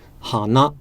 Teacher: nose in Japanese is low, ha, and then high, na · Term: low to high